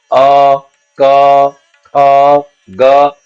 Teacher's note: क ख ग घ ङ ह अ, इन सबको बोलने के समय हमारी हवा सीधी गले से टकरा के सीधी बाहर आ रही है, इसका हमें स्पष्ट एहसास होता है। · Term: कंठ